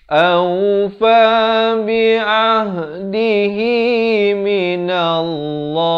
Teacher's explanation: Lafzul jalalah dibaca tebal dan diwaqafkan sekurang-kurang 2 harakat